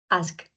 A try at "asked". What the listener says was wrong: Asked. Remember that we must say the final consonants. They are not mute.